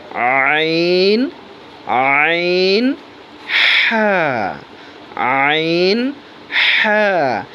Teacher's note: দুই নাম্বার মাখরাজ হলকের মধ্যখান। অর্থাৎ কণ্ঠনালীর মাঝামাঝি। একটু ঢিপ করে আইন আইন হা।